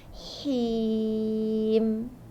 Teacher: Him tu, ha tu ada sifat hamas dengan rokhawa kan.